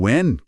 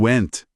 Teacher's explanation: Em when, o som morre no nariz. Em went, a língua bate no céu da boca para fazer aquele T final bem seco.